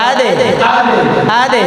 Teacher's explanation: দালে জজম কলকলা ধাক্কা দিয়ে পড়তে হয়